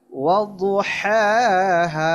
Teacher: والشمس والشمس والشمس جی والشمس وضحاها والضحاها وضحاها وضحاها আচ্ছা, খেয়াল করুন, দদ মোটা আওয়াজ হবে, হাটা গলা থেকে চাপ দিতে হবে, আর সেকেন্ড হা হচ্ছে নর্মাল